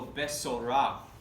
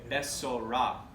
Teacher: So you put the emphasis on the last syllable.